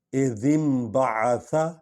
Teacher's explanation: حرف با سے پہلے اگر نون آ جائے، جزم والی نون آ جائے، ساکن نون آ جائے، تو وہ میم میں بدل جاتی ہے۔ اس کو قاعدہ اقلاب کہتے ہیں، یعنی بدل دینا۔